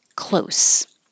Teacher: close is spelled the same as shut the door but it sounds like an S at the end